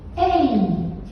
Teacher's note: o i ele é o declive da sílaba